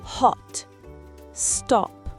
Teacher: Le symbole O est un O très court et ouvert.